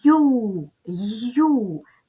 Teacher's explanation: крім голосного звуку у ми тут чуємо приголосний звук й